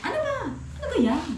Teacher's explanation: yung tono ko po para siyang palaging galit pero hindi naman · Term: rising intonation